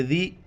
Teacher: دال کے وقت زبان باہر نکالنا ہے